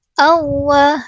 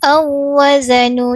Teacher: kita masukkan masukkan wau yang pertama ke dalam wau yang kedua secara kamilah, secara sempurna. Ah maksudnya wau yang pertama dah tak dengar langsung dah. · wau yang pertama dah tak dengar langsung dah. Kita hanya dengar jelaskan wau yang kedua sahaja. Ah sebab wau yang pertama dah dimasuk secara sempurna ke dalam wau yang ke dua. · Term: idgham, idgham mutamailain